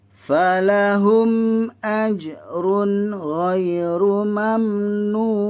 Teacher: Ustaz ambil 6 harakat yang mad arid li sukun ini.